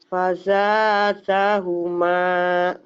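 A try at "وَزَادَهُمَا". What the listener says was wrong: bukan fa tapi wa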